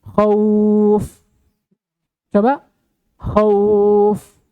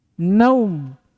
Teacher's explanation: dibaca lebih panjang dari harokat huruf semestinya, tapi tidak sampai ke harokat mat tabi'i. Lebih dari satu harokat, tapi kurang dari dua. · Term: huruf lin